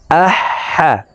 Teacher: হার মখরাজ হলকের মধ্যখান থেকে হবে, আহ হা। আমরা এই হা হরফ হলকের মধ্যখান থেকে উচ্চারণ করে পড়ব